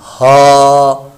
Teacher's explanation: کھڑا زبر ہے، اس کو ہم نے لمبا کرنا ہے، ایک الف 2 حرکات کے برابر اس کو لمبا کیا